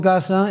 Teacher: se puede abrir o no la vocal, pero la S se pierde. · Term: pérdida de la S